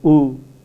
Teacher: U is a back vowel U is also a rounded vowel